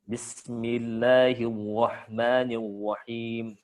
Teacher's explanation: Kemudian bihasromatur ro'at, ya, menghilangkan getaran pada huruf ro